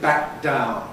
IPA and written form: ˌbæk̚ ˈdaʊn (back down)